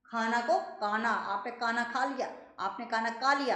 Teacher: कश्मीरी तथा दक्षिणी भारतीय लोग ख का उच्चारण क और भ का उच्चारण ब की तरह करते हैं।